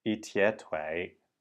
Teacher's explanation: sure you are saying it very clearly eat yet way and notice that my voice is actually going up